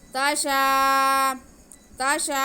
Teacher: تا کو بالکل نہیں کھینچنا لیکن شین کو ہم ایک الف کے برابر کھینچیں گے کیونکہ کھڑا زبر الف مدہ کے قائم مقام ہوتا ہے.